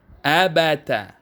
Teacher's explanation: Ingat ya, tanpa panjang, tidak boleh dipanjangkan. Kemudian digabung, ditekan huruf pertamanya, diturunkan suara di huruf ketiga.